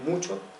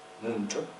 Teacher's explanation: La CH murciana es muy parecida a la judeo-española, que pronuncian con una prepalatal fricativa